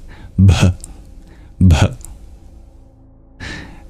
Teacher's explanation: the BH sound is a little breathy that H is not silent